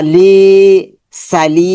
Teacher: লিটা লম্বা হবে, যেহেতু জেরের পর জজমালা ইয়া এসেছে,